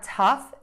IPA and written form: tʌf (TOUGH)